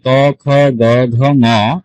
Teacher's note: আপনি যখন এই ক খ গ ঘ ঙ উচ্চারণ করবেন, তখন আপনার জিহ্বার শেষ প্রান্তটা আপনার এই তালুতে গিয়ে লাগবে, 3 নাম্বার পজিশনে গিয়ে লাগবে, তখনই আপনার উচ্চারণটা সঠিক হবে। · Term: কণ্ঠধ্বনি